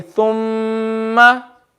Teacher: when Mim has a Shadda, you don't just read a double, but you read it extra longer. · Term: Mim Shadda